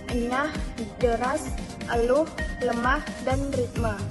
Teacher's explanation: fonem e vokal sedang tengah tak bulat